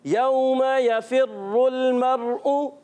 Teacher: रा पर तशदीद आने की वजह से ज़रा इसको रुक कर अदा करना है और रा पर पेश आ जाए तो पुर पढ़ते हैं। · वाव साकिन से पहले जबर आ जाए, वाव लीन होता है, नरमी से अदा करेंगे